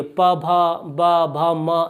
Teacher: जब हम बोलते हैं प वर्ग के जितने भी वर्ण हैं उनको, तो हमारे दोनों होठ मतलब मिलते तो नहीं है, पास आ जाते। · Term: ओष्ठ